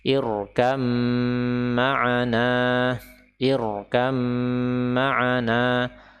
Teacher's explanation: huruf mim ketika ditasydid maka dia wajib untuk diberikan ghunah